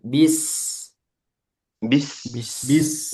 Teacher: sin dia memiliki sifat rakhawah dialirkan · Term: sifat rokhawah